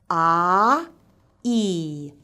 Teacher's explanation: We glide from ‘ah’, which is box-shaped, to ‘ee’, which is where our lips are spread horizontally. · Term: diphthong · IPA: /aɪ/